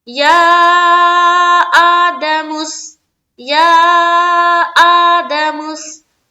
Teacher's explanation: یا کو ہم بہت زیادہ کھینچ رہے ہیں کیونکہ اس کے اوپر مد ہے، اور مد کی جو بتائی گئی ہے کہ مد کو کتنا کھینچنا چاہیے، جو ایک بتایا گیا ہے کہ اتنا مد کو کھینچنا ہے 3 سے 4 الف کی مقدار کے باقدر، تو اتنا ہی کھینچنا ہے آپ نے، اور لازم کھینچنا ہے۔